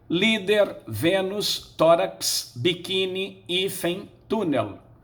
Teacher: a sílaba tônica em todas elas será a penúltima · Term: paroxítonas